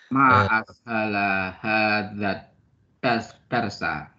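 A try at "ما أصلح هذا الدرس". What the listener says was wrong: Jadi nadanya bukan nada tanya ya. Karena ma di sini artinya alangkah ya. Nah, jadi ada tuh ta'ajub ya. Harfu ta'ajub, huruf yang menunjukkan ta'ajub ya. Ma ashala hadzal darsa.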